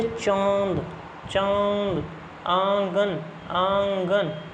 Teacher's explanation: आवाज जो है वो नाक से तो निकलेगी भी लेकिन मुंह से भी निकलेगी मुंह से निकलेगी नाक से भी दोनों से निकलेगी उसको बोलते हैं अनुनासिकता।